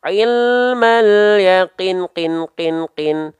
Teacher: 4 harokat itu seperti melafalkan qin sebanyak 4 kali.